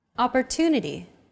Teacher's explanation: The stressed syllable to in opportunity is deemed more important, so it's pronounced longer than all other syllables.